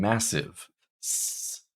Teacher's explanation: when you feel your throat, you do not feel any vibration at all. This is voiceless,